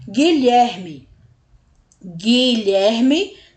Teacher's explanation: u não é pronunciado a gente vai direto pro I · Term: dígrafo